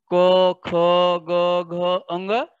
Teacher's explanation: क वर्ग कंठ से बोला जाता है, जैसे हम क क वर्ग में जितने अक्षर दिए गए हैं, जितने वर्ण दिए गए हैं उनका उच्चारण हम करेंगे तो कंठ से होता है, जैसा कि आप लोग ध्यान से बोल करके देखेंगे क ख ग घ अंग, अर्थात यह कंठ से हो रहा है।